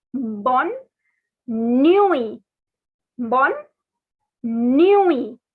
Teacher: This last T is not to be pronounced.